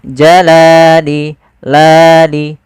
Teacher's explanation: Panjangnya adalah 2 harokat. Yaitu kita memanjangkan lamnya. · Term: mad tabi'i